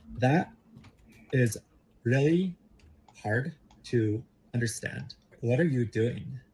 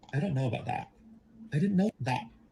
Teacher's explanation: I shortened the vowel that, but I keep the mouth open in the vowel shape even after the consonant has been said.